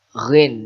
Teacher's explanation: ghin dari tenggorokan ya, ghin